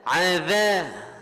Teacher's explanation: Zal kena baca molek dengan hujung lidah setuh bawah gigi kapak.